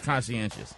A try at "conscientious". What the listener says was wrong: put a hard accent on the SCI. You said conchi. It's not chi. It's conscientious.